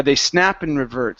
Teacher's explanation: when I'm really speaking quickly I tend to drop the A and the D